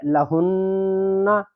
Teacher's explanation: نون پر تشدید آ گئی ہے اس لیے یہاں پر نون پر تھوڑی دیر لا کے پڑھیں گے یعنی غنہ کر کے پڑھیں گے